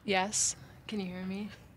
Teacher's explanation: she has a very like breathy voice